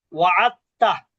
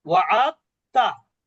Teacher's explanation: তো এখানে দাল এবং তা যখন পাশাপাশি থাকে তখন দালটা কিন্তু পড়া হয় না। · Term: ঈদগাম